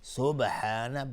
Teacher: سبحان با قلقله میخواد اینجا چون ساکنه